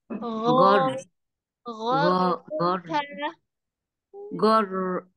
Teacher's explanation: huruf Gin makhrajnya ditenggorakan bagian atas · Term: huruf ghain